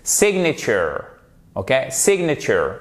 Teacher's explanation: il est prononcé normalement en termes d'intensité, mais on appuie sur la première syllabe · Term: accent tonique